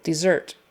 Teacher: Similar sounds, but the accent is on the second syllable, dessert.